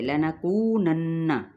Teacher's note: لنکونن، نون پہ غنہ کریں گے